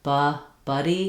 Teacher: my tongue is more flat, central in my mouth, and I have that schwa sound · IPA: /ʌ/